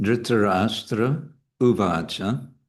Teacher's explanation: this R with a dot, which it would be called retroflex Ra, is a vowel, and it's a short vowel